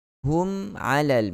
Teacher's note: Jangan kita panjangkan aradahum alal, tidak begitu, tidak ada gunnah yang panjang pada mim mati bertemu dengan ain.